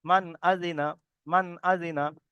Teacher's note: মিমের উপরে জাবার এসছে, জাবারটি হলো হারাকাত, হারাকাতের পড়াকে তাড়াতাড়ি পড়তে হয়, টান দেওয়া নিষেধ। তারপর নুন সাকিনের পরে হরুফে হালকির 6টি অক্ষরের মধ্যে থেকে এখানে হামজা এসেছে।